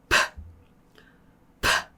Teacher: P 같은 경우 입술을 붙였다가 떼면서 그냥 공기를 터뜨려요. 그럼 소리는 없거든요. 근데 공기만 팍 하고 그냥 나가는 거예요.